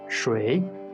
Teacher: the third tone the characteristic of the third tone is that at the beginning our tone should fall and then suddenly rise creating a turning point